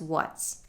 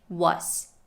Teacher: make sure to say that t and then quickly transition to an s because that t at the end is not stopped